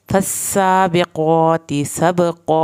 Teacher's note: फस्साबिक़ाति क़ाफ को पुर करके मोटा पढ़ना है। सबक़ा बा पे कलकला और क़ाफ को मोटा।